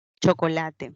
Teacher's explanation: la che que guarda relación con la africada africada palatal sorda